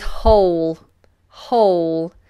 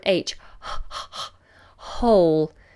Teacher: this W is obviously silent we just start with the aspirate h